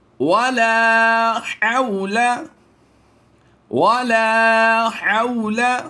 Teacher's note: حاء زبر حو کو لمبا نہیں کریں گے